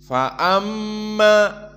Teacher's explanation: Fa amma, maka makhrajnya berpindah dari mim makhraj syafatan kepada makhraj khaysum, dan makhraj khaysum dari hidung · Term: mim musyaddadah